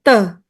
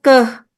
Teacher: Teh itu juga bunyi bunyi depan. Sementara keh itu bunyi belakang.